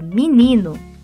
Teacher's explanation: o i tônico, que é uma vogal alta, acaba puxando todas as vogais anteriores à tônica, como o e é uma espécie de harmonização. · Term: alçamento